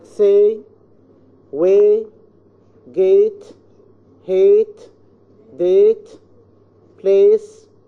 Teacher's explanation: The glide begins at a point behind the front open position and moves in direction of the position of eh. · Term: closing diphthongs